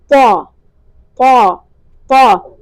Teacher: زبان کی نوک اوپر والے دانتوں سے ٹکرائے گی، اور جو زبان کا پچھلا حصہ ہے یعنی زبان کی جڑ وہ اوپر کی طرف اٹھے گی، منہ میں ہوا بھری جائے گی اور طا موٹا ادا ہوگا